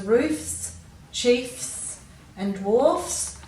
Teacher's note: when you say these words roofs chiefs and dwarfs you can hear that that f still is retained